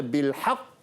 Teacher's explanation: apabila kita baca pada bil haqq ni, kita kena ambil masa sikit untuk berhenti. Dia jadi qalqalah akbar